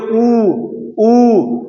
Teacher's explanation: दीर्घ ऊ का उच्चारण स्थान, आप बोल के देखिए ऊ होठ यानी ओष्ठ का प्रयोग होता है